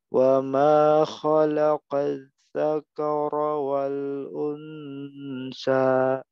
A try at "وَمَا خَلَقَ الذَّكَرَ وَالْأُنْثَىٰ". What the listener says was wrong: Kayaknya tetap tipis, tapi ro-nya tebal. Jangan ikut tebal semua. Dzakara. Dzakara wal unsa.